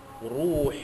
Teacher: ru itu roh itu tafhim baca tebal kerana baris di hadapan